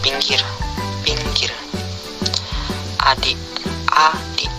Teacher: I. Kriteria: vokal depan, tinggi bawah, tak bundar, tertutup.